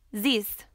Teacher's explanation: replace th sound with a z sound